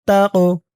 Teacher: কফ কলকলার হরফ ধাক্কা দিয়ে পড়তে হবে